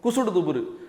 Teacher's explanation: அப்போ வல்லின உகரம் தான் குற்றியல் உகரம், அந்த வல்லின உகரம் தான் தன் ஓசையில் குறைஞ்சு வரும்